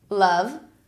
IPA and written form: lʌv (love)